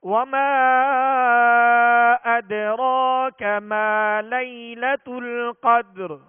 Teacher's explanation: وقف کی صورت میں را کو پر کریں گے اور را کو ساکن کر کے را پر ہی آواز اور سانس کو ختم کریں گے